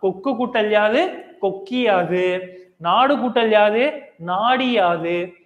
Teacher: உகரமானது இகரமா மாறும் அப்படின்னு சொல்லியிருக்காங்க